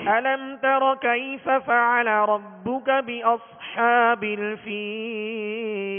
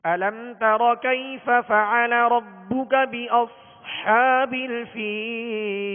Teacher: بأص میں سیٹی کی آواز بھی اور صاد کو پر کرنے کا بھی اہتمام کیجیے۔